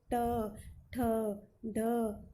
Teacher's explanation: मूर्धा, मूर्धा का अर्थ है उल्टी। तो जब हमारी जीभ उल्टी होकर कठोर तालु को मिलती है, स्पर्श करती है, तब इनका उच्चारण होता है।